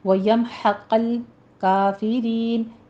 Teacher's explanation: ہا کو وسط حلق سے باریک ادا کرنا ہے ، قوف کو پر پڑھنا ہے، آگے لام کو باریک کر